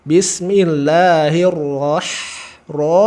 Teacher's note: ro sempurna tebal ha sempurna tipis